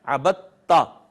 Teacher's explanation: دال کا تا میں ادغام ہو گیا. ایسے ادغام کو جو دو ہم مخرج حروف پہ ہوگا اس کو ادغام متجانسین کہیں گے.